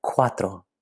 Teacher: Cuatro, see that UA? That U creates a diphthong with the A. So instead of saying cuatro, it blends together and says cuatro.